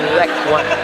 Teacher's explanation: Bukan za, pakai zal. Letakkan ujung lidah di gigi atas.